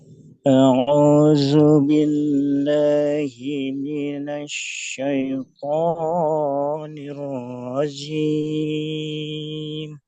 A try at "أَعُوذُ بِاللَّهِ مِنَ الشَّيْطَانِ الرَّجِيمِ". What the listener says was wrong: A'udzu, zu-nya masih sedikit tebal. Makanya ba-nya ditipiskan lagi.